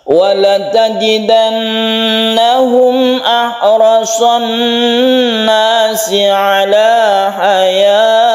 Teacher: Kita berhenti wakaf di sini dengan sukun hak karena tak marbutah itu kalau sukun menjadi hak